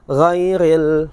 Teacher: Padahal seharusnya adalah huruf gha bukanlah huruf qalqalah yang harus berbalik, tapi banyak orang di luar sana membacanya dengan suara yang berbalik, ghairil magdu.